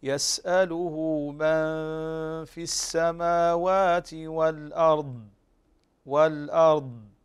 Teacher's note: فنقف على الضاد بهذه الصفة مستطيلة وكذلك مفخمة، ففاء إطباق واستطالة وتفخيم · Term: الاستطالة